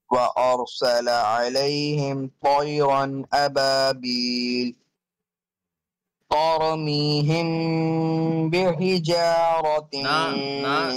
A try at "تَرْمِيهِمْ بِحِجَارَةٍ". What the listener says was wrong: No, ha must be sharper again